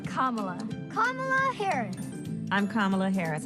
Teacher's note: equal emphasis on all three syllables